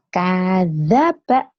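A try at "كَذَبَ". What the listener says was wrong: Kenapa K-nya panjang? Kadzaba.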